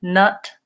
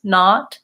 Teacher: One thing I suggest for this is really looking at contrast words like nut versus not, and noticing that nut has a not very open jaw versus not has an open jaw with my tongue near the bottom